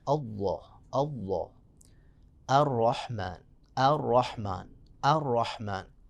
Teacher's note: خصوصاً جب اللہ میں جو لام ہے، اللہ کا لام، اس کو ہم موٹا پڑھیں گے